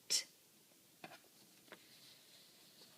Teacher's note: can hold however we just introduced a sound that's not continuous that's T you can't hold the t sound it's just T